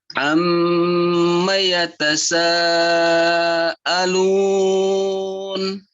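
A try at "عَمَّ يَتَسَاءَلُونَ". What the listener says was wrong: Di ain sedikit lagi nih ya, lihat ainnya ya. Ini di sini nih. Ain. Amma yatasaalun. Ini ini ain ya, beda. Banyak orang yang kadang-kadang bacanya sama ain atau hamzah. Nih, ain. Amma yatasaalun.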